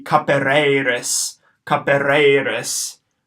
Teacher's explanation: Short A, short E, long E, short I.